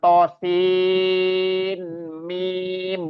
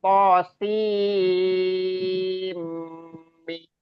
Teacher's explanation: Bukan sin lagi karena nun sukun bertemu dengan mim. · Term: idgham bi gunnah